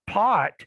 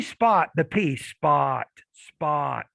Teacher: if you say pop pot you can feel a lot of air coming out when the p's in the beginning of a word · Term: aspirated